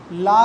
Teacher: ला का उच्चारण करते समय हमारी श्वास वायु जीवा के दोनों कॉर्नर से बाहर निकल जाती है, जिसके कारण इसे पार्श्विक व्यंजन कहा जाता है।